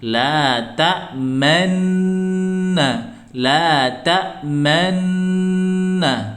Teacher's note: bunyi Nun yang pertama itu disamarkan ya makanya hanya bunyi dengung yang saja tetapi tidak dilafadzkan nunya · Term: ismam